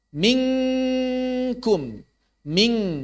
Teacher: ming di makhraj nun bukan, jawabannya bukan, tapi di makhraj kaf, maka berarti makhraj nunnya pasif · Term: ikhfa